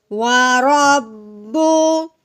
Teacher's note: जो शाद वाला हरफ होता है उसको जमाओ और ठहराव के साथ पढ़ते हैं, थोड़ा सा दबा के, और उस शाद वाले हरफ को 2 बार पढ़ते हैं, ठीक है। अभी हमने रॉ को बा के साथ मिलाते हुए पढ़ा है, फिर उसके बा की जो अपनी पेश होगी वो हम फिर पढ़ेंगे, ठीक है।